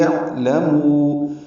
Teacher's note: عین ساکن وسط حلق سے عین ادا ہوتا ہے، حمزہ اقصی حلق سے ادا ہوتا ہے